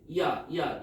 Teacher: 우리가 이중모음을 발음할 때 먼저 이제 야 같은 경우는 우리가 처음 입모양이 이였다가 아로 바꾸잖아. 그래서 이하고 아를 빠르게 발음하면 야가 되는 거잖아요.